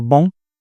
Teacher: The O sound becomes nasal where it occurs before a consonant that is nasal. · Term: nasalization